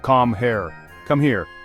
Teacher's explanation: The K is sharp, the R is guttural, and the overall delivery is clipped and direct. It sounds like an order.